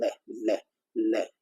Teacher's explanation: ल के उच्चारण में हमारी जो जीभ है उसकी टिप है ऊपर वाले दांतों की जड़ में टकराती है